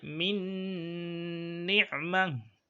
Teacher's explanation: it is one nun we are pronouncing with shadda and ghunnah. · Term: idgham with ghunnah